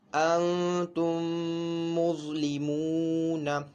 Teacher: غنہ نون ساکن کی آواز بھی ناک میں لے کے جائیں گے اور ایک الف دو حرکات کے برابر اس کو بھی کھینچ کر پڑھیں گے